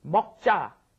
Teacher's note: that G sound is almost not even there. It's kind of swallowed